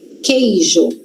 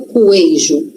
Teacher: Q que. Então tem um qu, tem, só que só tem um som. Som de k. Não tem som de ku, tem som de k.